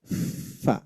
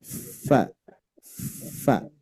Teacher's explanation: bibir bawah menempel ke gigi seri atas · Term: huruf Fa